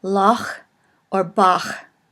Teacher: it is called a guttural, and it is sort of pronounced in the back of the throat